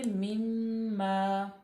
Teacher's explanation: मीम पे हम थोड़ी देर रुकेंगे इसलिए क्योंकि मीम मुशद्दद है, तो यहाँ पे गुन्ना पैदा होगा